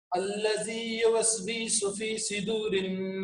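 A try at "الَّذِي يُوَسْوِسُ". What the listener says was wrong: एक मिनट रुकिए, अल्लदी युवस, वी को लॉन्ग नहीं करेंगे, वी को हम शॉर्ट करके पढ़ेंगे, अल्लदी युवस्विसु, अल्लदी युवस्विसु।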